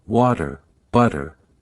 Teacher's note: the flap t in words like water, butter